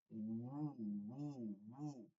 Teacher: ওয়াও পেশ বুটা যদি ঠোঁট গোল করে বলি তাহলে ঠিক,